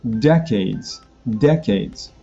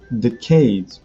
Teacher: I'm putting the stress on de.